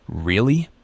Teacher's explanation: you could say really with a rising intonation which means you're surprised or confused or you could say it with a falling intonation to sound